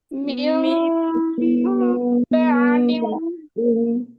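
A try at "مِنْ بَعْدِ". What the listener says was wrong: Din. Tebal. Ya, jangan terlalu dirapatkan. Dirapatkan dengan ringan, dengan lembut, dengan lunak. Min ba'din.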